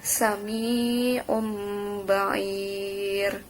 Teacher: Huruf iklab itu ada 1, yaitu ba, dimana ketika ada nun mati atau tanwin menghadapi satu huruf tersebut yaitu ba, maka membacanya harus ganti nun mati atau tanwinnya pada mim serta memakai gunnah